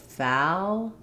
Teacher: I have to lift my tongue in the back more and then drop it for the L. So, I would say you're probably needing to just keep the tongue more flat.